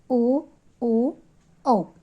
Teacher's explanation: ಕಂಠ ಮತ್ತು ತುಟಿಯ ಸಹಾಯದಿಂದ ಉಚ್ಚರಿಸಲ್ಪಡುವ ಅಕ್ಷರಗಳು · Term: ಕಂಟೋಷ್ಟಗಳು